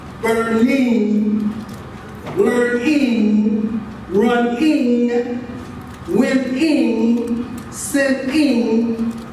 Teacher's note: The dorsal velar continuum, ing, is not being deleted, omitted, dropped, or lost.